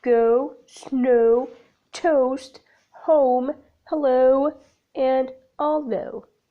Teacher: The glide begins in the position for A, moving up and back towards U. The lips are neutral but change to loosely rounded, as in go, snow, toast, home, hello, and although.